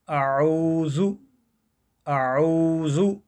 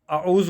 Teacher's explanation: واؤ کو ایک الف کے برابر ہم تھوڑا لمبا کریں گے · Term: واؤ مدہ